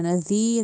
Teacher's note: ذال کو نرمی سے ادا کرنا ہے، دانتوں کے درمیان زبان لا کے